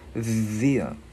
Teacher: chữ đờ đưa lưỡi qua giữa hai răng ép rung